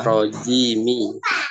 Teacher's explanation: Mi-nya tidak panjang, hanya satu harokat.